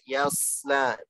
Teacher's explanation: Huruf shad ngalir suara, ngalir udara ketika sukun dan menebal. Yasla, bukan yas, tusin.